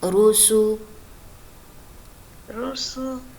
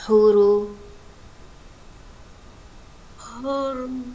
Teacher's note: را کے اوپر زبر اور پیش آئے گا تو ہم نے اس کو پر پڑھنا ہے یعنی موٹا پڑھنا ہے، اور زیر آنے کی صورت میں ہم نے اس کو باریک پڑھنا ہے.